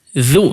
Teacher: huruf dzal ketika berharakat dhammah jangan sampai lari ke dha. Jangan ditebalkan, dia huruf tipis.